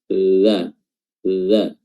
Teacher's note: Idza, dan setelahnya ada huruf dzal. Ya, huruf dzal ini makhrajnya adalah ujung lidah bertemu dengan ujung gigi seri atas dan juga bawah